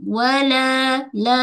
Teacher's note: panjang dua harakat suara naik ke rongga mulut. Bukan wala bukan ke hidung. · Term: mad asli